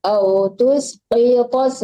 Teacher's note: ini qaf dan po tebal hurufnya